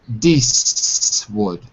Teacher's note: the T in American English sounds like a D, not a T, like D, which becomes Deeswood.